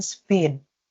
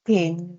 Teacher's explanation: the P sound in spin without aspiration and pin with a puff of air called aspiration are both recognized as the phoneme P.